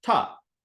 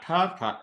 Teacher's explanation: your dental ta is right up the front, ta. Retroflex ta, though, you're like, ta, ta.